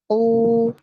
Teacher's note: Nah, ini sifatnya adalah isti'la. Kita tafkhimkan, kita tebalkan, kemudian sembari kita monyongkan kedua bibir karena dia harokatnya dhammah.